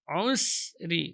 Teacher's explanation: Usri, tetap mengalir udara dan suara ketika sukun. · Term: safir sughra